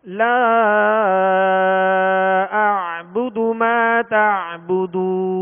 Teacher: عین کی جو ہے وہ آواز واضح کریں گے، اس کو جھٹکا نہیں پڑھیں گے بلکہ عین پڑھیں گے، اور اسی طرح ما تا عین کی آواز واضح کریں گے.